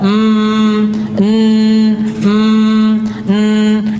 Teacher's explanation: Karena antum ketika mengucapkan gunah itu mesti hidung antum bergetar.